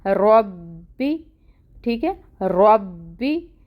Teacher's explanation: और रॉ यहाँ पे भी पुर पढ़ा जाएगा और इसकी हरकत 1 काउंट पढ़ी जाएगी। टाइम टेकिंग है, तशदीद है, बा पे टाइम टेकिंग करेंगे।